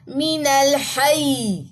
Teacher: اب یہاں پہ جو وقف کریں گے نبر ہوگا من الحی، تاکہ یا کی جو ایک جزم ہے وہ ظاہر ہو سکے، کیونکہ یہاں پہ یہاں پہ دو یا جزم ہے، ایک تو زیر گری وہ جزم آ گئی.